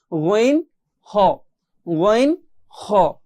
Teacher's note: কণ্ঠনালীর শেষ হতে দুইটি হরফ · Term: গইন খ